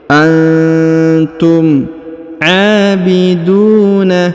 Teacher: huruf Aa dibaca panjang dua harakat karena di atasnya terdapat tanda Alif kecil Antum abiduna kemudian huruf du dipanjangkan dua harakat karena di depannya